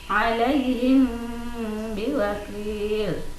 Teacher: Yang kedua, ikhfa syafawi, yaitu apabila ada mim sukun bertemu dengan huruf ba, maka membacanya harus samar-samar di bibir